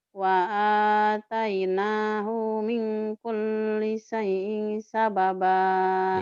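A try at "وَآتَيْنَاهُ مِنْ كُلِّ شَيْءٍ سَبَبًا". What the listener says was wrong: Iya, tinggal hutang shinnya aja tuh. Min kulli syai. Syai'in sababa. Dilatih shinnya ya.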